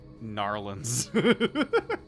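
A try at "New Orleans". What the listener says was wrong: Not Narlands. There's no R. It's Nolans.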